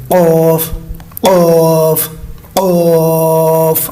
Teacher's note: قوف جو نقطوں والا ہے یہ موٹے حروف میں شامل ہے، یہ حلق کے اوپر والے حصے سے زبان کی جڑ جو ہے اوپر تالوں کی جو شروع والا حصہ ہے وہاں پہ ادا کریں لگا کے قوف قوف موٹا سا کر گئے قوف قوف قوف۔